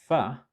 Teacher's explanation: you will obviously notice that the upper teeth and lower lips are involved